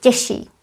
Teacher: Těžší means heavier, and because sh is voiceless, ž is voiced. Sh influences ž. We end up with double sh. Těžší. Although here we don't pronounce double sh, we simply say těžší.